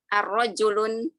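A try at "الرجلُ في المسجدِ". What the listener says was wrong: Ini ada alif lamnya. Ada alif lamnya. Enggak boleh tanwin. Nah, arrojulu fil masjidi.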